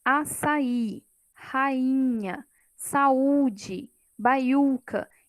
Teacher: o i e o u estão sozinhos na sílaba. Significa que eles realmente são uma vogal naquela sílaba.